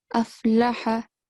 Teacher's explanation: both lam and ha carry the fatha stroke, so you have to prolong them for no more than 1 second